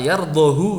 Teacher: yang jelas pada kata yardohu itu tidak dibaca panjang hunya.